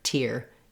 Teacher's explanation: in that case instead of being more like a d sound i do use a t like at the start of words with the puff of air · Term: real t